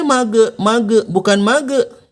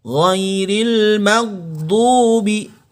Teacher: Jadi sahib yang Allah muliakan, huruf gha sukun ini tidak boleh memantul karena dia tidak termasuk huruf-huruf pantulan